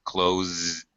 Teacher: We have a verb with the voiced sound at the end. We just add the D consonant sound.